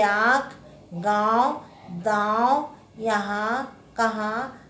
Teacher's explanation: अनुनासिक यह नासिक के वर्ण है। इसका उच्चारण नाक और गले से होता है।